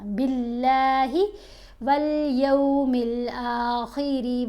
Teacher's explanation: ہے، لام کو موٹا اب نہیں پڑھنا، باللہ والیوم الآخر وعمل، را کو بھی ہم نے باریک پڑھا کیونکہ را کے نیچے بھی زیر ہے